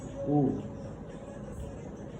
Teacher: It's a high front vowel. High front closed. Rounded vowel.